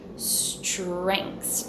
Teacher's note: that s sound then I have a t with an r in American English for many many accents when I have a t and then an R I can change the T sound to a CH